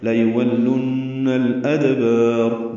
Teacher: دا ساکن پہ قلقلہ ہے، با کو لمبا کریں گے اور را پر پڑھیں گے وقفاً، لیکن یہاں پہ ملا دے.